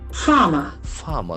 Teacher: There are two syllables and the accent falls on the first syllable.